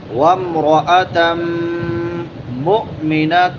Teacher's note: نون تنوین کے بعد حروف حلقی میں سے حمزہ ہے تو یہاں پہ اظہار ہوگا.